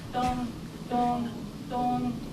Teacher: And pronunciation of N, it's not N, but just nasal sound.